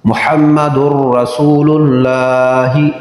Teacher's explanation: نون تنوین کے بعد را حروف یرملون ہے تو ادغام بغیر غنہ کے، لام اور را میں غنہ نہیں ہوتا۔